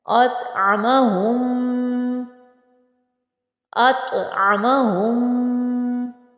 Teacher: یہاں پر طوا موٹے حروف میں سے ہے، اسے ہم خوب موٹا بھی پڑھیں گے اور اس پر قلقلہ بھی کریں گے